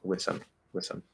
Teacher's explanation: the single most common and easy thing to do is just drop the th · the word with with is sort of exceptionally susceptible to dropping the th sound